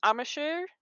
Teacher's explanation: just a little hop between the M and the S